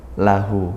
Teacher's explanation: Hu ini mad silah qasirah, dibaca panjang 1 alif ya, seperti mad tabi'i ya, panjangnya sama 1 alif atau 2 harokat, karena dia terletak di antara 2 huruf hidup, maka hunya dibaca panjang.